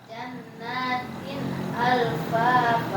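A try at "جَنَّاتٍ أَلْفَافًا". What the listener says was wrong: Nah, tinnya kurang. Nah, jangan tin alfafa, jangan. Tin agak ditekan dikit. Tin alfa. Tin. Jangan panjang. Jangan tin, jangan biasa. Jannatin tin. Nah, alfafa.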